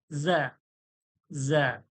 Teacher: সামনের দাঁত এবং নিচের দাঁত, দুটো দাঁতের মাঝামাঝি জিভের আগালটা লাগিয়ে হালকা ভাইব্রেটের মতো হবে, যেন ভাইব্রেশন হচ্ছে হালকা। জা, জা, আওয়াজটা যেন ভাইব্রেট হচ্ছে।